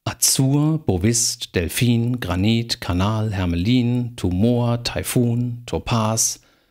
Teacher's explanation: das sind alles Wörter mit Endsilben Betonung